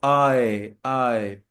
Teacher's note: अ और ई, यहां से अ से साउंड ई की तरफ जा रहा है, आए। ठीक है, तो ये डिफ्थोंग है।